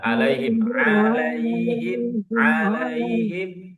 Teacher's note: di tengah tenggorokan huruf halaq ya jangan ke yang a ke hamzah